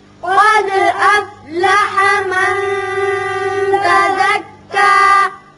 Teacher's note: دال کی صفت قلقلہ ادا کریں گے، اور یہاں نون پر اخفا ہوگا۔